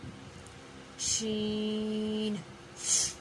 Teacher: اگلا حروف جو ہے وہ ہے ہمارے پاس شین۔ شین، جی، شین کا مخرج ہے وسط زبان اور بالمقابل اوپر کا تالو